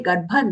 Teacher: the bha is mahaprana, ga followed by the hafra, bha mahaprana. And then we are using the half na for the anuswara.